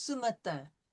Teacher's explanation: The T-I-N is going to come through your nose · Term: nasal vowel